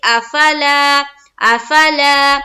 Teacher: अलिफ खाली से पहले जबर है, अलिफ मद्दा होगा, अलिफ मद्दा को एक अलिफ के मिकदार की बाकदर खींचना है।